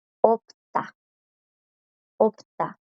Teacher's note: La última del 받침, que es S, no suena.